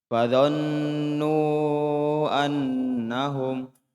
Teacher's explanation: Ini nun tasydid, hati-hati harus sama kadarnya ya. Harus sama.